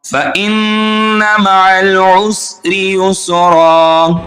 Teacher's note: اب یہاں پر نون مشدد ہے، نون مشدد پر غنہ ہوگا. میم مشدد اور نون مشدد پر ہمیشہ غنہ ہوتا ہے.